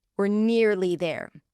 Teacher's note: we are is we're, but if you say it quickly, it would reduce to were